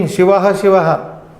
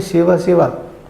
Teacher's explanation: You are not pronouncing the Visarga there.